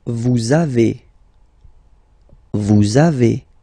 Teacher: the little liaison, little link between the two